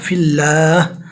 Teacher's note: اللہ کے نام کو باریک پڑھیں گے، اس لیے کہ اللہ کے نام سے پہلے زیر آیا